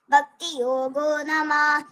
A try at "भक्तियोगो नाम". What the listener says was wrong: ഭക്തിയോഗോ നാമ, നമയല്ല നാമ, എന്നൂടെ പറഞ്ഞേ.